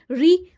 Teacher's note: ऋ मूर्धा से बोला जाता है तो मूर्धन्य हो गया